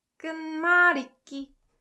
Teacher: this ut sound, when combined with 그, it provides more emphasis on the following consonant, so it becomes 끄.